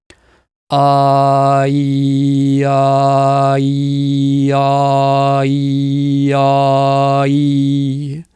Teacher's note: pay very close attention to your tongue, specifically which part of your tongue is moving. It's not the tip, it's more the middle to the back part of the tongue. It's going like this.